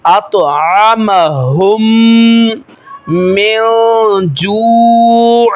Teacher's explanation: یہاں پہ میم ساکن کے بعد دوسری میم آ رہی ہے، غنہ کر کے پڑھیں گے